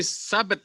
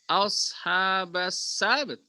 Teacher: Jadi sinnya itu yang agak dinaikkan sedikit.